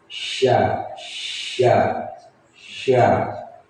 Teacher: makhrajnya huruf shin ini ada di lidah yang bagian tengah. Nah, itu nempel di langit-langit mulut. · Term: huruf syin